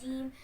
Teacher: जुबान के दरमियान वाले हिस्से को बिलमुकाबिल ऊपर के तालु से लगाकर अदा होता है।